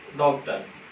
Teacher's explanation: ये आ और ओ का मिक्सचर होता है, मिश्रण होता है। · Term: आगत स्वर